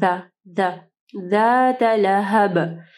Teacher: زال جب آپ پڑھیں گے تو آپ کی زبان کی نوک اوپر کے 2 دانتوں کے پاس لے کے آنی ہے